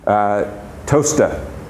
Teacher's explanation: You don't really pronounce that R on the end, at least not very strongly. It sounds to me more like an A.